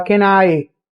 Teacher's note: O can e o I, eles são pronunciados juntos. O N atrai o I para falar can I.